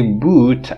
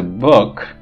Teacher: your muscle is more tense when you say boot. When you say book, your muscle is more lax. It means it's more relaxed.